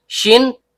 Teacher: tengah lidah naik memantul ke langit-langit